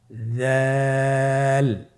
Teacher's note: উচ্চারণ করার সময় অবশ্যই 3 আলিফ টেনে পড়তে হবে। দালের মাখরাজ হলো জিহ্বার আগা সামনের উপরের 2 দাঁতের আগার সঙ্গে লাগিয়ে উচ্চারিত হয়।